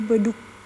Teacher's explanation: alfabet G tertutup dia akan berubah menjadi k tertutup sama seperti B dan D